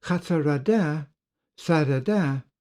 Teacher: where the initial letter Chet has been dropped in pronunciation, the first occurrence of the letter Resh has been wrongly read as a Dalet, and the final Resh of Adar has become a Hey.